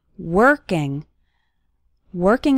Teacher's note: The letter o in working has more of an ER sound